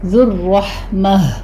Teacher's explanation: ذال کو نرمی سے پڑھیں گے، سیٹی کی آواز نہیں آنی چاہیے